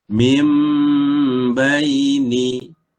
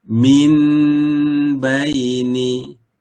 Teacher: huruf nun digantikan dengan huruf mim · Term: iqlab